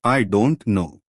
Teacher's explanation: the pitch Falls and then Rises slightly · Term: fall rise intonation